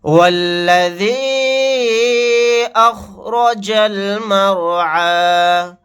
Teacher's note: یا مدہ یعنی حروف مدہ کے بعد حمزہ دوسرے کلمے میں ہے الف کی شکل میں، تو یہاں پر مد منفصل کا قاعدہ ہوگا۔ اس مد کو 3 الف کی مقدار کھینچ کر پڑھیں گے۔ · یہاں پر رائے ساکنہ کو موٹا پڑھیں گے کیونکہ رائے ساکنہ سے پہلے زبر ہے۔